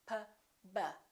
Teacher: P and B have the same point of articulation because both of them require the lips to close